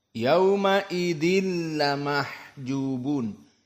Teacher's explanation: Tidak ada gunnah. Maka di sini langsung masuk kepada lam. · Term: idgham bila gunnah